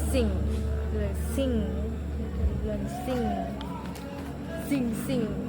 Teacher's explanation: termasuk ke dalam bunyi voice, velar dan nasal juga.